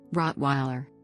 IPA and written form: ˈrɒtwaɪlər (Rottweiler)